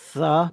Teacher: by putting my tongue between my teeth, I'm not completely stopping the airflow, but I'm letting the air slip through that little small gap between my tongue and teeth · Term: interdentals